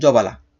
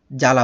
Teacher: প্রথম বর্ণের সাথে যদি ব ফালা যুক্ত থাকে তাহলে সেই ব এর উচ্চারণ হয় না